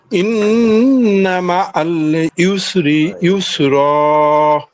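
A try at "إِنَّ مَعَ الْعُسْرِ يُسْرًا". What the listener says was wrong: দুটোটাই মনে হয় ইয়া হয়ে গেছে। একটা হচ্ছে আইন পেশ উস, আরটা হচ্ছে ইয়া ইয়া পেশ ইউস। ইন্না মাআল উসরি ইউসরা।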